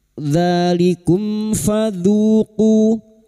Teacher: Dzalikum mim sukun bertemu fa idhar syafawi, mim sukun dibaca jelas tanpa mendengung